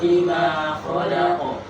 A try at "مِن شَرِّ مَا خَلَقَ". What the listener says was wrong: Nah, itu masih tebal ro-nya. Kasih lebih tipis. Min syarri. Syarri. Min syarri. Syarri. Min syarri ma khalaq.